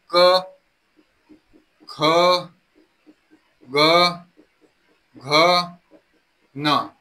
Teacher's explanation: सर्व वर्ण सांगितलेले आहेत की जे कंठ या उच्चारण स्थानातून आपले बाहेर पडत असतात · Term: क वर्ग